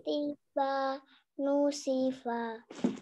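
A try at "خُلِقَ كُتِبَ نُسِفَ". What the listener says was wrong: Pak agak lebih pendek lagi. Khuliqa kutiba nusifa. Seperti itu.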